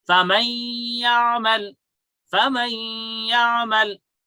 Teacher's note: But because there is ya after noon sakin, so we have merged, we have entered noon into ya, which is mutaharrik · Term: gunna